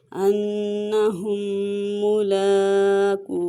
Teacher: انہم ملاقوہ، یہاں پہ نون مشدد ہے، غنہ کریں گے اور یہاں پہ ادغام میں شفوی کا قاعدہ ہو رہا ہے۔ میم ساکن کے بعد جب میم آئے تو وہاں پہ ادغام میں شفوی ہوتا ہے، تو یہاں پہ غنہ کر کے پڑھیں گے، لام کو کھینچ کے پڑھیں گے کہ اس کے اوپر کھڑی حرکات ہے، اور قاف کو لمبا کر کے پڑھیں گے کہ یہاں پہ واو مدہ ہے۔